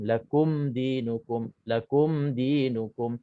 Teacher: Izhar syafawi cara bacaannya kita tak dengung. Kita kena nyatakan dan jelaskan mim mati.